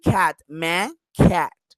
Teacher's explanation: in the a we have like a nasal sound. The a like in cat, man, cat.